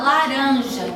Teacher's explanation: eu começo diretamente com a líquida lateral